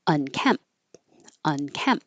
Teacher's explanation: You won't hear that P or the T because your lips close for the M and that's it. But if there's a vowel after it, then the T will connect.